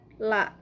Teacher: La juga masih mad asli. Nah, itu membacanya 2 harokat